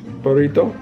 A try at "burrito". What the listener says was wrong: Burrito. No, burrito. Don't over accent something. It's not accent like that.